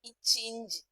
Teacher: நாவின் இடை அண்ணத்தின் இடை